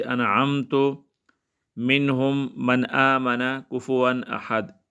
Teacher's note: ظاہر کر کے بغیر غنہ کے پڑھیں گے، خواہ یہ صورت ایک کلمے میں ہو یا دو کلمے میں، جیسے انعمت، منہم، من آمن، کفوا احد۔ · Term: اظہار